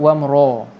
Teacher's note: Ra ni tebal, ra. Jangan baca wamra'a, tapi wamra. Ra. Jangan muncung, jangan bulatkan mulut. Wamra. Jangan sampai bulat.